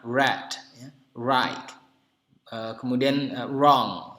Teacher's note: Kalau di American accent, dalam aksen Amerika, biasanya bunyi R-nya ada seolah-olah bunyi W-nya.